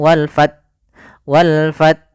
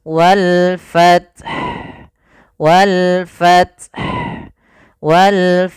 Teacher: yang pertama matikan ta dengan sifat hamasnya